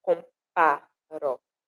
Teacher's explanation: A nossa terminação da contagem métrica, ela deve, né, de fato, encerrar na sílaba forte da última palavra do verso. E aqui na palavra comparo, a sílaba forte é o pá, comparo. Compá é onde a gente imprime mais força, projeta mais a voz para dizer essa palavra, para pronunciar essa palavra.